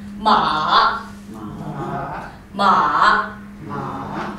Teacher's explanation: you try to make a turn but not start too high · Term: the third tone